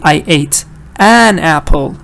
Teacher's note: I can't say schwa, because the stress is on an.